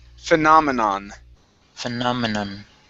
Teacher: end that with an N sound instead of an M as in mom